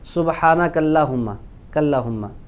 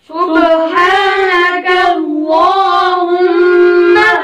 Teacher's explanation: ایک الف کے برابر لمبا کریں اور اللہ کے لام کو موٹا کریں گے